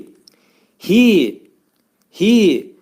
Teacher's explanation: bu hərfin məxrəci boğazın axırındadır, aşağı hissəsindədir, axırındadır